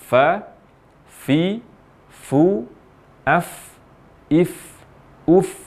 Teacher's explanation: Huruf fa diucapkan dengan mempertemukan antara ujung dua gigi seri atas dengan bibir bawah bagian dalam